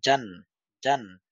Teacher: জিহবার মধ্যখান তার বরাবর উপরের তালুর সাথে লেগে শক্ত করে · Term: জিম